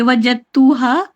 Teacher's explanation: اپی جو فرسٹ والا جو اگزامپل دیا تھا نا آئی تھنک اس کی کریکٹرسٹک یہ تھی کہ ایک والے میں قلقلہ ہو رہا تھا اور تا میں قلقلہ نہیں ہوتا، تو ہم دال میں قلقلہ نہ کر کے ڈائریکٹ تا سے ملا دیں گے